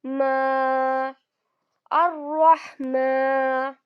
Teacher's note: میم پر کھڑا زبر آ رہا ہے، اس کو ہم 2 کاؤنٹس کھینچ کر پڑھیں گے